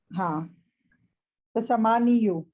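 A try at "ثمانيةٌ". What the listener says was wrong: समानी यू नहीं कहते, समानी पढ़ते हैं इसको बस,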